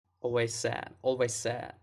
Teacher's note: The word always ends in a Z sound. That's considered a weak consonant sound. It's voiced. It links right into the S, which is a stronger sound. I think you can think of it as just dropping the Z sound altogether.